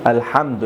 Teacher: হামজা লাম জবর আল, হামিম জবর হাম, আল হাম দাল পেশ দু, আল হামদু। এখানে দেখুন মিম সাকিন এসেছে, মিম সাকিনের পর দাল এসেছে। আমি কোনো ধরনের গুন্নাহ করি নাই, আর গুন্নাহ করাও যাবে না। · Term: ইজহারে শাফাউই